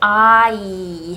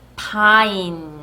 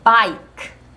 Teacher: 소리가 아부터 이까지 I 하고 소리의 변화가 있어야 되는 소리예요. 마찬가지로 단어 끝에 자기 자신은 소리 나지 않으면서 앞에 나온 모음을 장모음으로 소리 바꿔주는 매직 E가 있는 경우에 I라는 장모음 소리가 납니다. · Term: 장모음 I 소리